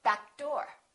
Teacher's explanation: When a consonant is a stop, for example, P-bu and another consonant follows, even if the consonant doesn't have the same point of articulation, make sure you hold that first consonant and kind of link it. For example, if I say uh back door, we're not going to say back door.